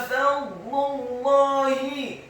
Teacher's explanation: Kata fadlullahi, huruf fa-nya dibaca fathah satu harokat, huruf wa-nya dibaca sukun, tafkhim dengan posisi bibir bawah kita agak tertutup dan posisi lidah kita di langit-langit atas. Ingat, huruf dha yang sukun atau huruf dhad yang sukun tidak boleh diqalqalakan atau dipantulkan. · huruf lamnya dibaca tipis, dhammah cukup satu harokat saja karena setelahnya langsung disambung ke huruf lam yang tasydid, dan fathah dua harokat karena harokatnya tegak pada kata Allah.